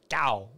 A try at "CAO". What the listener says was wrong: Nope, C-A-O. No, you pronounce it by saying the letters. Nope, it's not an abbreviation. They're letters.